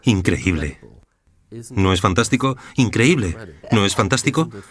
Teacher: ya hay un cierto ritmo y además tienes una voz muy melódica tu voz sube y baja